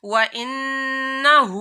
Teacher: نون کے اوپر تشدید ہے تو نون کے اوپر غنہ کرنا ہے.